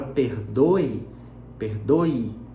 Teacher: eu tenho o e com som de i que se caracteriza como Glide